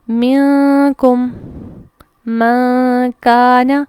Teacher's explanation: اچھا, اس کو پڑھتے ہوئے جو چیز ہم نے نوٹس کرنی ہے کہ آواز کیسے چھپتی ہے, زبان نون کے مخرج کو نہیں لگے گی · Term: اخفا